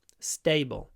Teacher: so it's not like a normal English T stable stable stable it's unaspirated after s